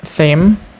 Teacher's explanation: It consists of two consonant sounds, either voiceless dental fricative tha and voice bilabial nasal ma, and only one vowel sounds, either high front unrounded vowel e.